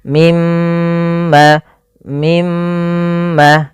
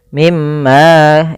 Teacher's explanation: Artinya kita menahan suara mnya sepanjang dua harakat. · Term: ghunah